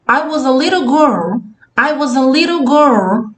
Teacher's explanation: ela fez uma boquinha um pouco mais arredondada, mais circular, para dizer I was a little girl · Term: boquinha mais arredondada